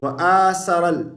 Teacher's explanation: ثا کو سین نہیں پڑھیں گے